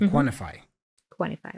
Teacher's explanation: So we drop the sound T in the word quantify. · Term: N-T reduction